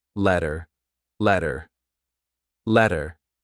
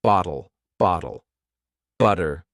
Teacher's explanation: if you have a letter t in the middle of a word sometimes you pronounce it as d